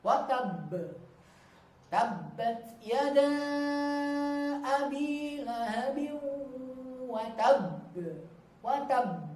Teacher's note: Hurufnya ditekan dulu kemudian baru langsung pantulannya. Jadi ada jeda dulu sedikit ya dengan bacaan hurufnya dan bacaan pantulannya. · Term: qalqalah